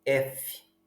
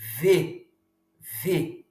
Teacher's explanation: nós falamos determinados fonemas que são surdos, como o F, por exemplo, F, ou sonoros como o V